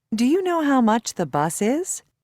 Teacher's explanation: Notice how intonation rises when requesting information.